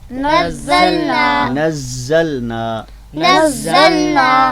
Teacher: تو حرف مشدد یعنی کہ کسی حرف کے اوپر جب بھی تشدید آتی ہے، یعنی وہ 3 دندوں والی، اس کو شد بھی کہتے ہیں تشدید بھی کہتے ہیں، تو کسی بھی حرف کے اوپر جب وہ تشدید آتی ہے تو اس میں اصل میں 2 حروف ہوتے ہیں، یعنی کہ پہلے ساکن اور بعد میں متحرک، تو لہٰذا اس پر ہم دیر سے اور سختی سے اس کو ادا کرتے ہیں